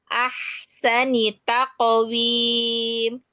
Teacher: alirkan ha yang berada pada tengah tenggorokan.